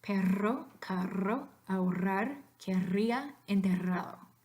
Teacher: And then, easier, if you have the double letter R, it's always going to be the rolled version, vibrante múltiple